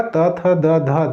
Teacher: दंत से में त वर्ग पूरा आएगा